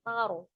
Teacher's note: Jadi ro-nya ini dibaca dengan tebal, taruh. Nah, sebelumnya ada fathah ya di huruf ta.